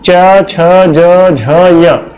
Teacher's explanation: च छ ज झ य, तो ये बोला जाता है आपका तालु से। सर स्वर में भी ऐसा ही था, तो ये च वर्ग जो है वो आपका बोला जाता है तालु से।